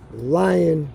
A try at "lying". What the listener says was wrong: Or lion. You gotta be careful because you said lion. I'm thinking lion in the jungle.